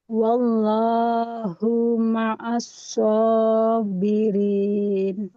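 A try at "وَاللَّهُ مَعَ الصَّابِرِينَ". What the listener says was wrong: Nah, wallahu hanya dhamma tidak ada wawu ya, nggak boleh kita panjangkan. Wallahu ma'as sabirin. Wallahu hanya juga nggak boleh panjang.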